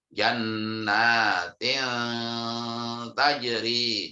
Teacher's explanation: ketika menyuarakan nun mati, ujung lidah hampir menyentuh pangkal 2 buah gigi atas sesuai posisi makhrajnya ta, dal, dan to